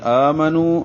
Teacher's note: آ کھڑا زبر ہے 2 حرکات لمبا کریں گے. نو واو مدہ ہے، آگے دوسرے کلمے میں حمزہ بشکل الف ہے، ایک ہی کلمے میں نہیں ہے چونکہ دونوں کلموں میں ہیں تو اس لیے یہاں پہ مد منفصل، جیسے یا پہ مد منفصل تھی اسی طرح منو پہ مد منفصل ہے.